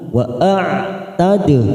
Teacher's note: wa a'tad dal sukun qalqalah sugro